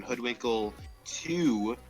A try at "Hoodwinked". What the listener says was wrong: It's hoodwinked, not hoodwinkle.